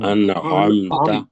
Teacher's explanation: ان نون کو پڑھنا ہے لیکن لمبا نہیں کرنا، تو یہ اظہار ہو جائے گا